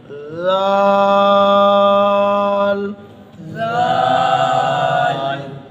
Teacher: ذال کے اندر نرمی ہونی چاہیے، اگر ذال کے اندر نرمی نہ ہوئی تو ذال اور ذا میں پھر فرق نہیں رہے گا